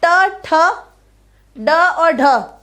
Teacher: मूर्धा के अंतर्गत ट, ठ, ड और ढ हो जाएगा। ये ट वर्ग हो गया हमारा।